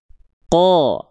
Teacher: pangkal lidahnya tetap naik sehingga keluarnya vokal seperti O. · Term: huruf qaf